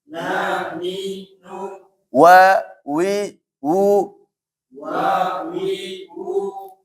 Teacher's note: waw ini teman-teman tetap dia monyong ya, mau dia fathah, kasrah atau dhammah.